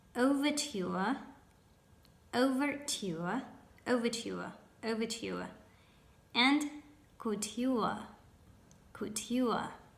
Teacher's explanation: the last two words have got the ending juə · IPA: ['əuvətjuə]